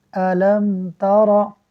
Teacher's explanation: میم ساکن کے بعد با اور میم کے علاوہ اگر کوئی اور حرف آ جائے تو اظہار شفوی ہوگا، یعنی میم ساکن میں غنہ نہیں کریں گے